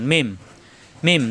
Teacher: দুই ঠোঁট থেকে উচ্চারণ, মিলানো ঠোঁট ছেড়ে দিয়ে আবার মিলাতে হয়।